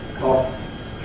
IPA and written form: kɒf (cough)